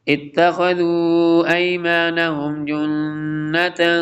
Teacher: تا مشدد ہے، حمزہ کو جوائن کریں گے تا کے ساتھ